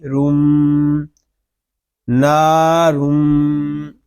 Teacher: را میم دو پیش رم، نارم. یہاں میم شدد ہے، اس میں غنہ ہوگا، اور یہاں تنوین کے بعد ہوئے یر معلوم میں سے میم آ رہا ہے، اس لیے یہاں پہ ادغام یر معلوم مال غنہ ہوگا.